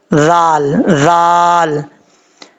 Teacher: یہ ذال ہے، بغیر سیٹی کے ساتھ پڑھا جائے گا. اس کا مخرج زبان کا سیدھا اوپر والے دانتوں کے اندرونی کنارے سے لگے تو ذال پڑھا جاتا ہے